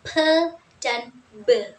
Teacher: yang menggambarkan di mana suara-suaranya dihasilkan yang pertama bilabal Bil bial suara-suaranya dihasilkan dengan menyatukan kedua bibir